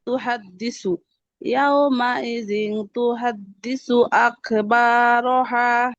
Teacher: تحدث দালে টান হবে না